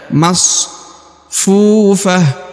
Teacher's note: huruf Fu dibaca Dua harakat dipanjangkan dua harakat karena di depannya terdapat wau sukun atau wau mati